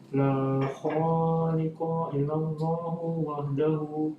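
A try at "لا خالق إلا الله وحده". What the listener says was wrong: iya, bagus.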